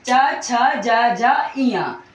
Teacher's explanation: तो जब आप च वर्ग बोलोगे तो आप बोल के देखो, इसमें जब भी हम च वर्ग बोलेंगे तो हमारी जिह्वा जो है वो तालु को स्पर्श करेगी